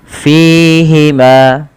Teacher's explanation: pada lafal fi panjangkan ia 2 harakat ditandai dengan ada ya sukun yang datang setelahnya. Ma, begitu pula ma yang dibaca dengan mad tabi'i adanya fathah bertemu alif.